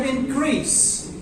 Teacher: In the verb form, the stress shifts. The stress moves to the second syllable.